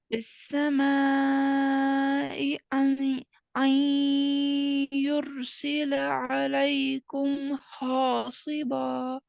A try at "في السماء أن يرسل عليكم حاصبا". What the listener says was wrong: ठीक है, यहाँ पे देखें, आई नहीं है ये. ठीक है, युरसिला अलैकुम हासिबा. हासिबा मोटा नहीं पढ़ेंगे हम, यहाँ पे हैवी नहीं करेंगे बा और हा को.